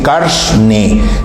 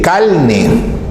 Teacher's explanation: De repente otra persona dice calne. En Centroamérica, por ejemplo, la tendencia es pronunciar la vibrante simple o la vibrante múltiple como una L